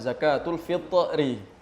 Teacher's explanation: Fitri pakai tha ya harus ada qalqalahnya zakatul Fitri jangan pakai ta karena begitu imlak nanti tulisannya Fitri